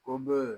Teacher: یہاں با ساکن ہے اس میں تلقلا خوب ظاہر کریں گے